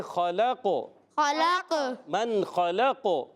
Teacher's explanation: من خلق قاف حروف مستعلیہ میں بھی ہے اور حروف قلقلہ میں بھی ہے. جی ہاں، وقف کرنے میں قاف میں قلقلہ بھی ہوگا. اور قاف جو ہے زبان کی جڑ اور تعلق کے نرم حصے سے ادا ہوتا ہے، یاد رکھنا ہے.